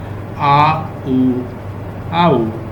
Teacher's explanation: आ मुंह ओपन होगा, और ऊ वो लिप्स जो है वो राउंड होंगे, उसमें राउंड मीन के आगे को होंगे।